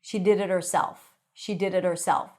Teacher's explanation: The t sounds like a light d.